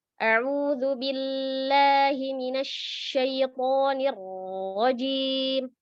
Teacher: membacanya itu setiap tasydid dibaca panjang.